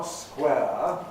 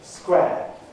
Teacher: One of the things you may have noticed is people using a monophthong for air and saying not square, as I do, but square.